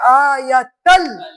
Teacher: تنوین کو نہیں پڑھیں گے، آیتل تشدید والے لفظ سے ملا دیں گے